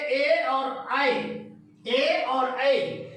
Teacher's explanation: इन दोनों का उच्चारण कंठ से भी होता है और तालु से भी होता है। कंठ तालव्य इसीलिए ये कहलाते हैं।